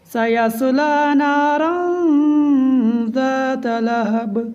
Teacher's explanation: نارا اخفاء ہوگا، 1 الف کے برابر ناک میں آواز چھپائیں گے